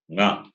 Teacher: That is, in addition to the place of pronunciation for this class, that is the throat, as well as nose, both are involved in pronouncing the fifth letter of this class, which is nga. When you say nga, the sound comes from the throat as well as nose. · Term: nasal